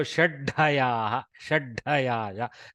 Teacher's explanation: There is an agama of the dhakara. Hakara has not gone really because dhakara embeds the hakara in it as a mahapranatva. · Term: Mahaprana dha